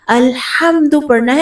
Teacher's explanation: دال پیش دو ہے خالی، اس کو لمبا نہیں کرنا